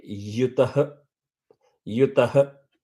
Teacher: that end is not ha, it is h, sort of shaved off at the head. So it actually is one matra. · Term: visarga